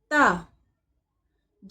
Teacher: जबान की नोक ऊपर के दांतों के जड़ से लगे